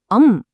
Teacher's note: இது தனியா ஒரு மெய்ெழுத்து கிடையாது. ஒரு உயிரெழுத்தை தொடர்ந்து ஒலிக்கும் ஒரு தூய்மையான மூக்கோலி அதாவது நேசல் சவுண்ட் வைப்ரேஷன் தாங்க இது. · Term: அனுஸ்வாரம்